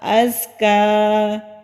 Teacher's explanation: ये ज़ा मजबूती के साथ अदा होता है, हल्की सी बजिंग साउंड यानी कि गूंजने वाली आवाज़ आती है